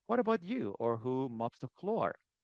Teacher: the falling intonation for the WH questions